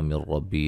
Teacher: نون ساکن کا ادغام بلا غنہ، غنہ نہیں کریں گے